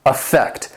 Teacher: affect has 2 syllables, and the stress is on that second syllable